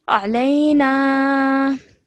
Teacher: This alif is an alif mad, so stretch the na sound out for 2 seconds